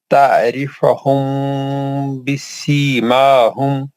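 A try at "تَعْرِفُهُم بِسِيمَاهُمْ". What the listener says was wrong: جہاں پیش ہے پیش پڑھیے، زبر نہیں پڑھیے، دوبارہ پڑھیے.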